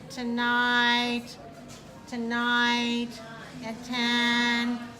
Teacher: So, for example, if I say a word without changing my pitch, I can say tonight, tonight, at 10, no change in my pitch. I'm keeping on the same pitch.